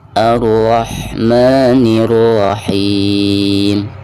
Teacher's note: Ar-nya di sini tebal ya, karena dihukumi tabkhim karena berharakat fathah.